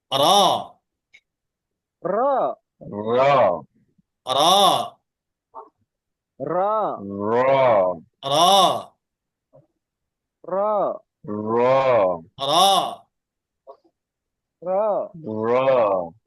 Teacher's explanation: জালালি জালালি জালালি জালালি জালালি জালালিজালালি জুনুবা নুনবাতুনরাতুন [মিউজিক] ই আখ না আখ না র জিবার আগার পিঠ তার বরাবর উপরের তার সঙ্গে লাগিয়ে এক কথায় জিবার উপরেরটা একটু উল্টা করে উপরের তালুতে লাগাতে হবে